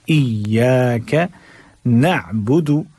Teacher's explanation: ایاک میں حمزہ جھٹکے کے ساتھ، یا مشدد ہے زور کے ساتھ